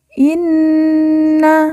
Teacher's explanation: Nun yang bertasjid langsung kita tekan kita tahan dua harakat dan didengungkan